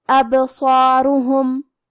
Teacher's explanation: یہاں حرف الصاد ہے اور اس کے بعد مد الف ہے، لہذا ہم یہ دونوں حرف کو بھاری آواز میں پڑھیں گے۔ یہاں را پہ اور ہا پہ دونوں پہ پیش ہے تو ہم یہ دونوں پیش کو برابر سے ادا کریں گے۔